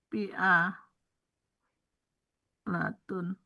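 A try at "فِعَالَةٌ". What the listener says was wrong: A-nya panjang, fi'alatun.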